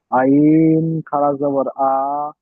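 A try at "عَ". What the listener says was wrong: টান আর কম হয়ে যাচ্ছে। আইন খাড়া জবর আ,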